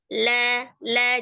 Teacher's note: secara makhraj itu antara tepi lidahnya secara bersamaan bertemu dengan gusi atas ya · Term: huruf lam